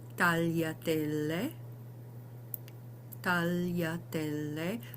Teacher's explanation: you say tall, tal, and then yatelle. So if you can finish the l and then do the ya